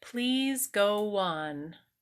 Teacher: this is called where is the word an off glide okay we just stick a W in between the words okay so it's like we do a W sound